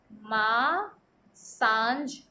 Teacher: अनुनासिक को बोलते टाइम में वायु नाक व मुंह दोनों से निकलती है।